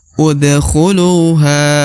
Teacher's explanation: huruf ha dibaca Dua harakat karena terdapat alif di depan huruf ha